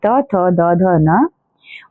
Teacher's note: दंत्य जो कि दांतों से उच्चारित होते हैं